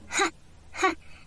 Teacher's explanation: Это как лёгкое вдыхание у нас получается звук ха